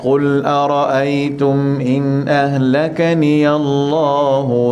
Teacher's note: Bila sebut nama Allah tu, angkat sikit nada dia, nampak kelainan. Tapi janganlah sumbang pula.